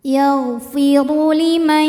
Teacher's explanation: Huruf ra dibunyikan secara tafkhim sebab ra berbaris di atas yaitu berbaris dhammah. Cara membacanya ditebalkan, pangkal lidah kita naik.